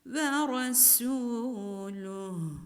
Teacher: Vera şu Road derken Ran'ın kalın okunması gerekir Veyron suyu solo ra harfi kalın olarak telaffuz edilmelidir su derken yine ince bir ötre sesiyle sin harfi okunmalıdır ve